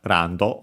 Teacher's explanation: Should be accented just like in English, on the first, on the ra, and it is. · notice the L that becomes Japanese R, the additional O for the do.